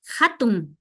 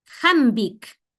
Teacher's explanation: la H en quichua no es muda, suena como la J, ¿no? Como en inglés, para decir house.